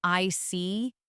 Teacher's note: When you show understanding with I see, your tone drops slightly to show calmness